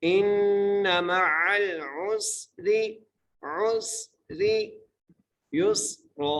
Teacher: next ہے ان مع العسر، حمزہ کو نون سے ملانا ہے اور نون پر غنہ کریں گے، میم کے اوپر زبر ہے، عین کو لام سے ملائیں گے اور پھر اگلے عین کو سین سے ملائیں گے، آگے را ہے، را کو باریک کر کے پڑھیں گے